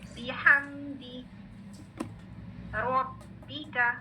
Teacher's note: با کی کسرہ کی ساؤنڈ بی والی ساؤنڈ. ٹھیک ہے, آگے ہا مڈل آف دا تھروٹ سے کلیئر ہو